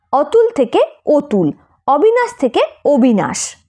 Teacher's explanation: পাশের স্বর ই বা উ থাকলে অ এর উচ্চারণ ও এর মত হয় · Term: অ এর বিকৃত উচ্চারণ